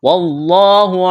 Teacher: لفظ اللہ کے نام سے پہلے زبر ہے، لفظ اللہ کے نام کو موٹا کرنا ہے